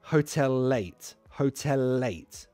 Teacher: It's not two separate L's anymore. It's just one single L. And because there's a vowel after, light L.